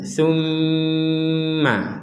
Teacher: Kalau tasydid di atasnya lam, kita hanya menekan saja. Kalau tasydid di atasnya mim, kita menekan plus ada dengungnya.